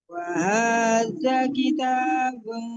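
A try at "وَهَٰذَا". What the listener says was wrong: Lahnya panjang, Bu. Bu, jangan cepat-cepat. Wa hadza panjang lahnya.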